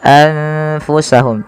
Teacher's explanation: Di sini ada bacaan ikhfa yang terjadi apabila adanya nun sukun bertemu dengan huruf ikhfa. Dan di sini ada nun sukunnya bertemu dengan huruf fa, maka nunnya disamarkan kepada huruf fa. Maka menjadi anfusahum tidak lagi dengan jelas suara nunnya anfusahum tapi samarkan ke huruf fa.